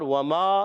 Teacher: ہونٹوں کی گولائی سے واو ادا ہوتا ہے